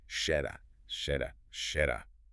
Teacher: They are stopping the airflow for a fraction of a second longer before releasing it.